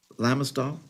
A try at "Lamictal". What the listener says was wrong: It's Lamictal, C, not S.